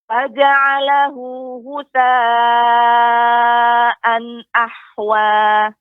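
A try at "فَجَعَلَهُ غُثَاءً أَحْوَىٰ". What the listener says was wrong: Ketika membaca fa lebih ditampakkan lagi Ibu aliran udaranya ya, hamesnya faja'alahu.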